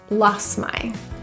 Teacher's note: I really lost my touch. The T in lost often gets deleted because there's another consonant after,